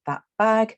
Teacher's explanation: you have a phrase like that bag then in record speech very often a speaker will have a lip closure at the end of the first word · the sound at the end of the first word is becoming more similar to the sound at the beginning of the following word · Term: assimilation